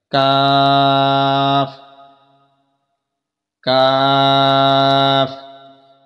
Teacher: اس کے بعد دوسرا کاف آگے جو آتا ہے وہ کاف کش والا کاف اس کو بولتے ہیں۔ اس کا مخرج زبان کی جڑ اور تالو کے سخت حصہ سے یہ ادا ہوتا ہے۔ دو نقطوں والا نرم حصے سے ادا ہوتا تھا جبکہ یہ والا سخت حصے سے ادا ہوتا ہے۔